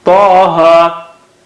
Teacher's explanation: ta is very thick and high. Taha, ha is flat.